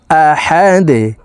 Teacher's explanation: এ দালকে নিচের দিকে ধাবিত করে সাকিন করতে হবে আহাদে ধাক্কা দিয়ে উচ্চারণ করব আহাদে কুলহু আল্লাহু আহাদ কুলহু আল্লাহু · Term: কলকুলার হরফ